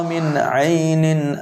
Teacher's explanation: نون پہ جزم ہے یعنی ساکن, اس کے بعد عین ہے تو یہاں پر غنہ نہیں کریں گے